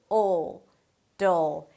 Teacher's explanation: And then finally we have a flap T, that sounds like a D and a dark L - "d'l", "d'l". The dark L is created here so it has this really deep, dark sound and kind of weird